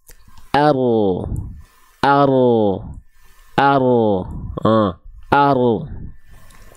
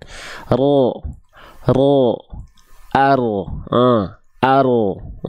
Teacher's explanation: ar ar ar ya R ro ro ah ro ah Ro Jadi si ujung lidahnya dia tidak menempel sehingga seperti membentuk V ya ada celah di tengah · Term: furja